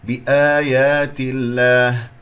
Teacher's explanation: مكسور قبل اسم الجلال الله التاء، إذا مرقق اللام ، بآيات الله، هنالك من يجعل همس كثير في هذه التاء